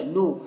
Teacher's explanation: یہاں پر واو ساکن سے پہلے لام کے اوپر پیش ہے تو واو مدہ ہوگا، اسے بھی ایک الف کے برابر کھینچیں گے